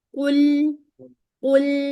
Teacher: क आपने मोटा अदा किया है ना तो लाम मोटा ना हो जाए